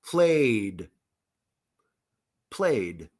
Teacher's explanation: some verbs end in vowel sound like a sound like in play play this is voiced so D sound played played or delayed I'm sorry my plane was delayed or